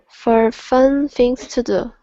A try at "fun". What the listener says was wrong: So sometimes you end up swallowing the vowel, saying fun. Okay, so it's fun.